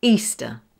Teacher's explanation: Here, the ER sound is a schwa. We do not pronounce ER as er. We say uh. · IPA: ə, /ˈiː-stə/